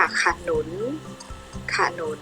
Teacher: พยางค์แรกออกเสียงอะกึ่งเสียงพยางค์ที่สองออกเสียงแบบมีหอหีบนำ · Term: อักษรนำ